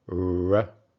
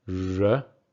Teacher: Talking about the R sound. In American English, that sound is retroflex, meaning that your tongue is curled back in your mouth.